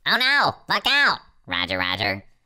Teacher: I take the pitch of my voice and I pitch it up, up into like an almost humorous set of octaves.